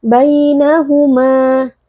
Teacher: terdapat Lin karena ada ya sukun yang sebelumnya berharakat Fathah di sini ya sukunnya dibaca dengan lunak